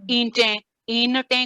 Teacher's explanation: ہم اردو میں بھی نون کو ہائیڈ کر کے پڑھتے ہیں. لکھا ضرور ہوتا ہے لیکن پڑھنے میں نہیں آتا